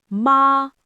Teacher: If I say ma with a rising tone, it means hemp.